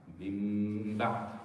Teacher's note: In both cases, if the nun al-sakina is followed by a ba, whether it's the end of a word or it's coming within in the middle of the word, you basically convert the noon into meme, and you make a ghunna with two haraka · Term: al-iqlab